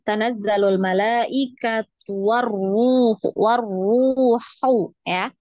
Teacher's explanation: Hu ini yang tengah tenggorokan